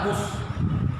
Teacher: Sad mesti tebal. Bukan tebal, mesti angkat lidah belakang. Bukan belakang lidah tu masuk ni bawah ni.